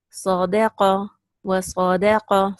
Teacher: Sad is also heavy, qaf is also heavy, both with a single fatha, second level of heaviness.